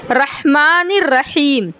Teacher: मैं जब बोल रही हूँ तो मुझे महसूस हो रहा है कि मेरे हलक का जो बीच वाला हिस्सा है उस पे ज़ोर लग रहा। अगर आपको ज़ोर महसूस नहीं होता तो आपका मखरज अदा नहीं होगा। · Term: बड़ा हा